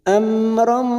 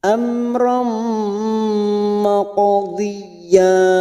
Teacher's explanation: Amram fathah tanwin bertemu mim idgham bi gunnah kita tekan selama 3 harokat, siap masuk ke huruf mim.